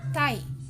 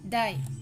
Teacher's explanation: the consonant sounds are made when tongue tip contacts the alveolar ridge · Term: alveolar sound